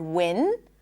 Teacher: When the tip of the tongue blocks the air, air comes out through the nose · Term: n sound